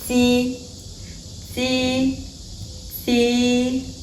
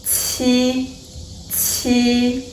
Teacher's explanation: T is aspirated there is a burst of air that is going to flow